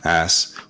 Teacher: you may or may not hear the h being dropped at the beginning of a word